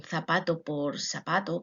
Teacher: Hay rasgos fonéticos, como es el seseo, es decir, la pronunciación de la Z y la C como una S